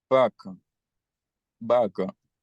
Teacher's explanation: es la A media, esa en una posición central